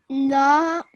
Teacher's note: Why did you say this la sound for 2 seconds? Because it have a alif madda.